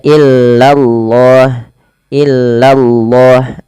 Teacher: Kemudian nih di lafal Allah bila didahului dengan fathah atau dhammah dia harus ditebalkan lafal Allahnya. Illallah, lanya tapi tipis, tidak boleh tebal